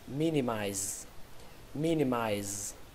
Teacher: Từ này trọng âm của nó rơi vào âm đầu tiên, âm mi. Âm mi trong trong cái từ long mi, mi.